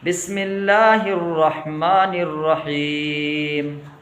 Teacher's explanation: اللہ کے نام سے پہلے زیر ہے تو آواز باریک ہوگی، پتلی ہوگی